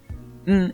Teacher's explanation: this is because it isn't quite like the N in English hmm cuts off sound in the back of the throat not the front making a slight nasal hum that can be near the M sound it's a lot like